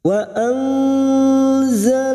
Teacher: Nun sukun bertemu zain ikfa hakiki, kita samarkan bunyi nun sukun dan mendengung selama 2 atau 3 harokat. Wa anzalallahu huruf zain, zalallahu lam jalalah yang didoli fathah kita baca tafkim.